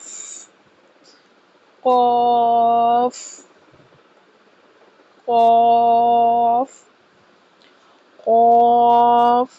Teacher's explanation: زبان کی جڑ اور تالو کا نرم حصہ